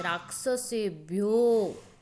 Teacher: જ્યારે ઓ વર્ણનું ઉચ્ચારણ કરવાનું હોય છે ત્યારે ઓ વર્ણ ઉપર થોડોક ભાર મૂકવામાં આવે છે. રાક્ષસેભ્યો એવું.